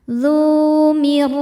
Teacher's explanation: Huruf ro dibaca tafkhim karena berharakat fathah. Maka ron-nya tebal.